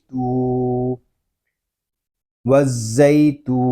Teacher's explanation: یہاں تا کو ہم ایک الف تک کھینچ کر پڑھیں گے کیونکہ یہاں پہ واو مدہ ہو رہا ہے۔ واو مدہ اس لیے ہو رہا ہے کہ واو ساکن سے پہلے پیش آ گیا ہے۔